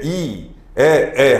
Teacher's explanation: 고모음에서는 입을 적게 벌리고 중모음은 조금 더 벌리고